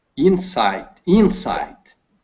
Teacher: So the emphasis on the first syllable